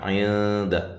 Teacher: نون ساکنہ کا یہاں اخفا ہے، مع الغنہ باریک اخفا ہے